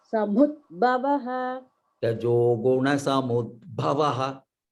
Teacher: if it is Alpa Prana only, when you come to Bha, you must make it Mahaprana